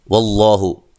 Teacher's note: لفظ اللہ کو موٹا ادا کریں گے، اس سے پہلے زبر ہے